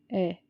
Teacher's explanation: ए जो होता है वो हमारी टंग के बीच के हिस्से से बोला जाता है, मध्य से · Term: मध्य स्वर